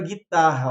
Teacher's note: Porque ali em cima o GU tem som de G e o RR tem som do R forte. Então, por essa questão, nós temos dois fonemas ali com um som só, que torna a palavra ter 6, né?